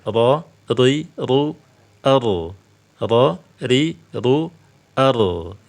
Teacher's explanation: memiliki sifat takrir ya memiliki sifat takrir ya berulang ada getaran namun yang benar ketika menyebutkan huruf ro getarannya Cukup Satu Kali pantul saja